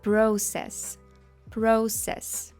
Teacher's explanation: в англійській вже не ц а с